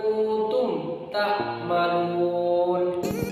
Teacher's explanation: Jadi mimnya itu dibaca jelas, tidak ada dengung, tidak ada samar, itu harus jelas membaca. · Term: idhar safawi